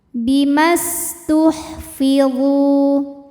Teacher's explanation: Bimas, huruf sin punya sifat yang tidak memiliki lawan yang dinamakan dengan sifat sofir. Sofir artinya berdesis. Jadi ada suara desisan seperti suara ular.